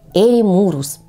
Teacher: И ударение в слове ставим на гласную «у»